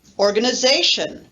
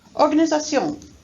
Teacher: you can hear that the stress in english is stronger and more forceful than in french and this is one of the things that makes english difficult